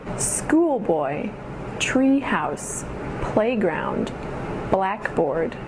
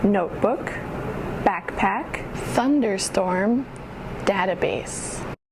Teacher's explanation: with compound nouns, regardless of the number of syllables, the emphasis goes on the very first syllable